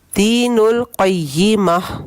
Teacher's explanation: یہاں پہ جب وقف کریں گے اس تائے مربوطہ پہ تو یہ گول ہا بن جائے گا. ہا نہیں بنے گا، ہا بنے گا، وہ ہا جو سینے کے قریب سے نکلتا ہے، حلق کے درمیان سے نکلنے والا ہا نہیں بنتا.